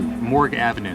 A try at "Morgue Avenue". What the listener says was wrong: It's not Morgan, honey, it's Morgue.